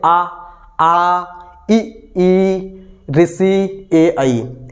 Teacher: ऐसे स्वर है जिसमें ओस्ट हमारी गोल आकृति नहीं बन रही है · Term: आवृत्ताकार